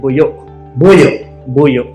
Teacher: So it's like a glottal stop. Like the O is glottal. Glottal stop.